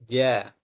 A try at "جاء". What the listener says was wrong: Jim jangan ada udara. Ja. Nah, itu salah. Ja. Ja. Rapatkan makhrajnya.